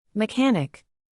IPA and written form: məˈkæn.ɪk (Mechanic)